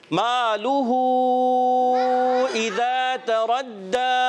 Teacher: खड़ी हरकत के बाद हमज़ा दूसरे कलमे में आने की वजह से मद बनती है, मद मुनफसिल